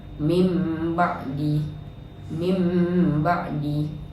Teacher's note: Cara bacaannya ialah menukarkan bunyi nun kepada huruf mim serta dengung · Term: iqlab